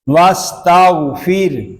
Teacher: یہاں را باریک ہوگا کہ را ساکن سے پہلے زیر آ گیا ہے. واستغفر، غین کو پر پڑھیں گے، اس کلمے میں صرف غین پر ہو رہا ہے.